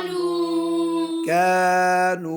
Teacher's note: नून में आवाज़ नाक में जाएगी, लेकिन उसके बाद जो वाव है ना खींच रहे हैं वो फिर क्लियर करो ना जाए।